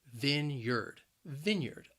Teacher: The word has two syllables and the stress is on that first syllable. And that first syllable can be a little challenging because you have that short I sound